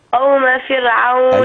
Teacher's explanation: الكلمة الثانية كلمة فرعون، الراء مرققة قولا واحدة